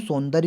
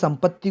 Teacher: सौंदर्य को नाक से तो बोल रहे हैं, संचित को भी नाक से बोल रहे हैं, संपत्ति को भी नाक से बोल रहे हैं